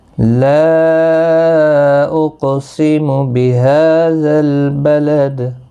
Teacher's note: لا اقسم بہذا البلد، لا مد منفصل ہے، 3 الف کی مقدار کے برابر کھینچ کر پڑھیں گے۔ قاف مستعلیہ ہے، پر پڑھا جائے گا، ساکن بھی ہے، اس پر قلقلہ بھی ہوگا۔ ہا کو 1 الف کی مقدار کے برابر کھینچ کر پڑھیں گے، دال ساکن پر قلقلہ ہوگا وقف کی صورت میں۔